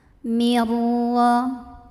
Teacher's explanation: Kemudian di sini ada idgham bila gunnah karena ada nun sukun yang bertemu dengan huruf ra. Maka nun sukunnya dileburkan ke ra. Jadi bukan min tapi mir. Tapi tidak perlu ditahan.